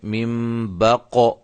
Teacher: یہ قاف قلقلہ ہے، اس کو ہم نے ہلایا ہے